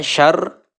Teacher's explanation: dibaca tipis karena ro berharokat kasroh ya, dibacanya tipis. Mengenai hukum ro dibaca tipis apabila berharokat kasroh atau mati sukun setelah harokat kasroh.